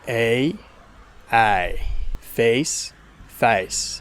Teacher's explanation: In Australian accents, instead of starting from e, it starts from a. So instead of getting a, you have a. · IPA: /æɪ/